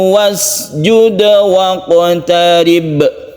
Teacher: Ada qalqalah 2 di sini. Qaf dan ba.